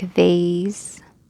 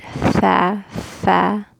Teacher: Mehmus, the sound comes with the air. It's the bottom lip and the top teeth that make the sound, the letter fa. And the air comes out of the throat.